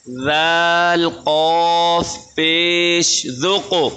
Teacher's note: ज़ाल क़ाफ पेश ज़ुक़, क्योंकि ये क़ाफ मोटा है। दूसरी बात ये है, ये क़ाफ कलकल का हरूफ है, इस पर झटका लगाएंगे